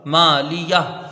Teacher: میم کے ایک الف کی مقدار کھینچ کے پڑھیں گے، لام کو جلدی پڑھیں گے ، یا کو ہاتھ سے ملا کے جلدی پڑھیں گے، وقف